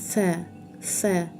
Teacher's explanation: Tilimiz ustki tishlarga teggan holda sa harfini chiqarishga harakat qilamiz.